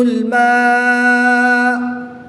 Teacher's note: الف مدہ کے بعد حمزہ اسی کلمے میں ہے تو یہاں پر مد متصل ہوگی، وقف کی حالت میں پیش کو ساکن کر کے پڑھیں گے۔